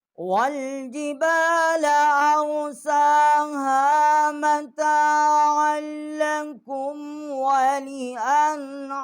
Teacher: وَالْجِبَالَ أَرْسَاهَا مَتَاعًا لَكُمْ وَلِأَنْعَامِكُمْ، اور یہاں بھی ہم نے یہ ہا جو ہے اس کا بھی ہم نے اسی طرح جو اقصائی حلق ہے وہاں سے اس کا مخرج نکالا ہے، اور عین جو ہے وسط حلق سے اس کا مخرج نکالا ہے، اور عین کو جو ہے لام کے ساتھ ہم نے مشدد کیا ہے۔